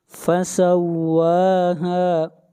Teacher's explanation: واو کو کھینچ کر پڑھیں گے 1 الف کے برابر